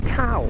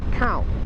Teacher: Khao with the long vowel is rice. Khao with the short vowel is to enter, to come in somewhere.